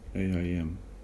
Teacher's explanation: There's a Y sound between the A and I. AIM, yeah sound in between.